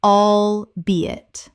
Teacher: 3 syllables with the stress on the second.